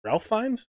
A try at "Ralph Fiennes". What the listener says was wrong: It's Rafe. It's spelled Ralph, but it's pronounced Rafe, yeah.